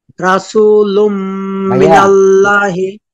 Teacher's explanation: তানবিনের পরে বা গুন্না অক্ষর মিম আসছে গুন্নার সাথে মিলিয়ে পড়বো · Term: ইদগামে বাগুন্না